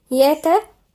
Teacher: مروا الراء هنا مشددة ومفخمة يعني ساكن متحرك. بهم يبقى الياء والتاء مرقق وبعدها الغين مفخم